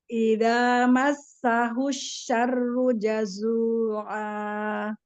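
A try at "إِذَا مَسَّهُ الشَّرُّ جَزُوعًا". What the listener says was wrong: Kurang tebal ro-nya. Asyarru jazu'a. Iya, hati-hati terbalik. Huruf sin au shin.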